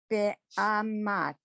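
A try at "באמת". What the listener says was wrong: Almost, except get the vowels are the same. Every vowel is the same in this word. Be'emet.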